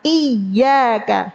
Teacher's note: bukan dipanjangin tapi ditekan makhrajnya tengah lidah tekan ke atas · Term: tasdid, tasydid